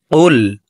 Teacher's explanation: এই কফ হরফকে জিহ্বার গোড়া তার বরাবর উপরের তালুর সঙ্গে লাগাইয়া উচ্চারণ করব